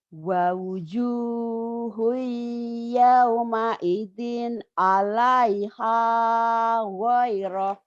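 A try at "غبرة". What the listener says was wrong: Gobaroh. Bukan goyah. Gobaroh. Wa wujuhu yawma idzin 'alaiha ghabarah.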